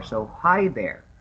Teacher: It raises after hi and falls after there. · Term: intonation